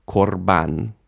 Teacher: the stress is on ban, and kar is a closed syllable, so the a shifts to o, korban. And you can really see in here how the, I guess you could say the shva protected the aw sound from classical Hebrew into modern pronunciation.